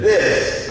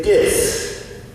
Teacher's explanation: instead of saying this with the TH sound, we tend to say dis